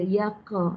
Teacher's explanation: Qalqalah sughra yang tanda sukun, tanda mati lembut sahaja